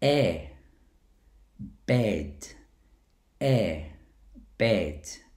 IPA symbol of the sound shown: e